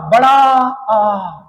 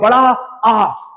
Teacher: विवरत में मुंह पूरा खुलेगा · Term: विवृत